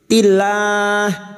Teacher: Tilah kita panjangkan 4 harokat, mad arid li sukun bertemunya mad dengan huruf hidup yang dibaca wakaf. Karena kita memilih wakaf di sini, maka 4 harokat kita panjangkan mad arid li sukun. · lam jalalah kita baca tarkik atau tipis karena sebelumnya ada kasroh. Lam jalalah yang didahului kasroh kita baca tarkik.